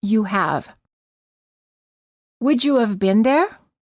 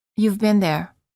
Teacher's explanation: you must add an uh sound between the pronoun and the contraction